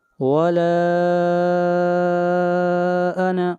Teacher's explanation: ولا کے اوپر بھی مد منفصل ہے، اس مد کو 3 الف کے برابر لمبا کریں گے